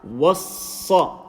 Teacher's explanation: wow, empty mouth, sad full mouth.